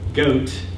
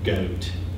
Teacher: young speakers also have a lower goat than older speakers